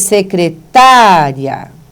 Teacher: quando você diz secretária você tem a sílaba tônica antes do encontro vocálico